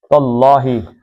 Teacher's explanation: زبر کی وجہ سے اللہ کا لام موٹا